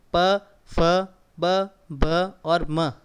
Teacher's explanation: प फ ब भ और म, ये जब बोलोगे तो आपके दोनों होठ आपस में टच करेंगे और खुलेंगे। आप देख सकते हैं, आप घर पे इसको ट्राई कर सकते हैं। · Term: ओष्ठ्य वर्ण